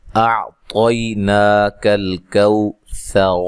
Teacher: سا کو نرم ادا کرنا ہے، اور وقف کی صورت میں را کو موٹا ادا کرنا ہے، ملانے کی صورت میں بھی را کو موٹا پڑھیں گے، ٹھیک ہے، جب ملا کے پڑھیں گے اعطیناک الکوثر، پھر بھی را موٹی ہوگی، ٹھیک ہے۔